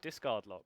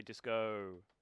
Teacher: Yeah, disco is shorter than discard because it's of the long consonant sound, assonant sound in the A. The vowel has the R, the AR, has a longer sound than an O.